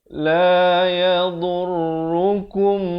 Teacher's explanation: Da makhrajnya di tepi lidah, di kanan atau di kiri. Bawakan, kalau kanan bawa ke kanan, kiri bawa ke kiri.